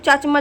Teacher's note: अल्प प्राण में आता है यह स्पर्श व्यंजन भी कहलाती है और इसको हम अघोष भी कहते हैं